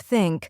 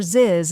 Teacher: many Learners pronounce it as s or Z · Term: th sound